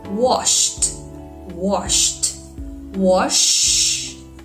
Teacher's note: It doesn't vibrate. So the D sounds like T.